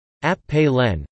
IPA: ˈɑ.pə.lə(n)